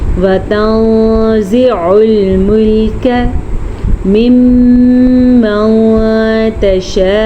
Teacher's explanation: میم کے اوپر شد آ گئی تو ہم میم کا غنہ ادا کریں گے · عین کے مخرج کو حلق سے نکالیں گے، حلق کے درمیان والے حصے سے عین نکلتا ہے